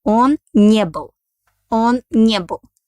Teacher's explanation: pronounce it like one word, and our accent falls on negative particle не